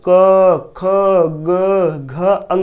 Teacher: का वर्ग के जितने भी अक्षर आते हैं उनका उच्चारण स्थान क्या होता है, कंठ